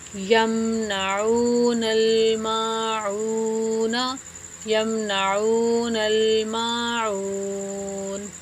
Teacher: وقف کی صورت میں عین جو ہے وہ 3 الف کے برابر لمبا ہو جائے گا، اور ہم جب جوڑ کرتے ہیں تو اس کو 1 الف کے برابر کھینچتے ہیں، لیکن وقف کی صورت میں یہ پہلے سے زیادہ لمبا ہوگا۔